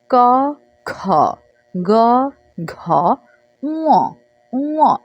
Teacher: পঞ্চম ধ্বনিটার ক্ষেত্রে আমাদের নাকের সাথে লাগিয়ে উচ্চারণটা করতে হবে। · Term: নাসিক্য ধ্বনি